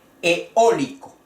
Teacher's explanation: El acento va en la O. Eólico. La vocal fuerte E, la vocal fuerte O, eólico.